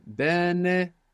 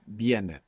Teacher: when we stress down on that E, it splits and it becomes tiene.